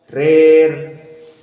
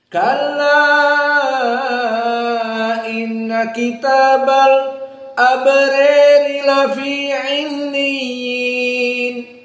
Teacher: kalimat ror dibaca dalam keadaan al-imalah al-kubra